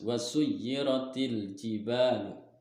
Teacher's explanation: Wasuyyiratil di sini yaitu ada wasuyyiratil jibalu masuk ke dalam huruf atau masuk ke dalam hukum alif lam qamariyah karena huruf alif lam qamariyahnya alif lamnya bertemu dengan huruf jim dan dibacanya juga harus jelas